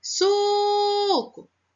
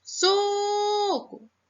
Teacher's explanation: novo suco Opa conseguiu escutar isso mesmo foi o Su então o Su é a sílaba mais forte então ele é a sílaba tônica